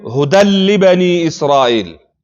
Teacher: د تنوین نون مدغم شوی ده څه شي کې لام کې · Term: ادغام